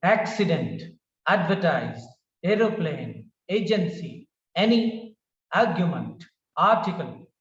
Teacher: the words are of three syllables made up of three syllables and the stress is on the first syllable